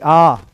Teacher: आ एक सेकंड में इसको बोल ही नहीं सकते। इसको आपको एक मात्रा में उच्चारण होगा ही नहीं। आपको दो मात्रा लेनी पड़ेगी। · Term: दीर्घ स्वर